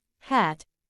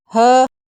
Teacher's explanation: H H sound is an example of a frickative sound as the air is being forced through a narrow passage between the vocal chords producing friction and sound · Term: glottal